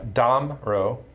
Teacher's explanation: the emphasis is on the first syllable